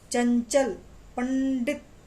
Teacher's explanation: अनुस्वार में बोलते समय आवाज रुकती है, अवरुद्ध होती है। चंचल, पंडित आवाज रुक रही है।